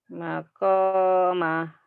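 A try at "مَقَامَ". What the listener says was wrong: Konya panjang.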